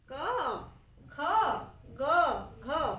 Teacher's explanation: जब हम क उच्चारण करते हैं तो हमारा लास्ट वर्ण क्या आता है, अ आता है।